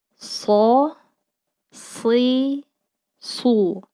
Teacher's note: ujung lidah diletakkan pada dinding bagian dalam gigi seri bawah dan pangkal lidah terangkat dan ada suara desisan yang menyertai saat huruf keluar